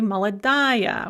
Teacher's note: because it's under stress we're going to say maladaiya we're going to actually pronounce the ending